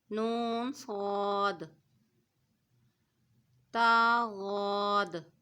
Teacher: صاد حروف مستعلیہ ہے، اس کو پور پڑھیں گے ، نون صاد، تا غاد، غاد بھی حروف مستعلیہ ہے، اس